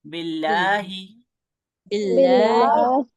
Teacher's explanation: फिर लफ्ज अल्लाह को हम बारीक पढ़ेंगे